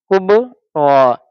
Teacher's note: با حرف قلقلہ ہے اس لیے اس کی آواز لوٹتی ہوئی محسوس ہوگی